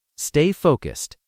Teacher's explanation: emphasizing the long O sound in focused and making sure the S sounds are crisp and clear